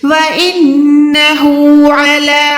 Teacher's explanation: नून पे शद है यानी गुन्ना करना है, हा उल्टा पेश है, ये हु नहीं है, ठीक है, ये हु है।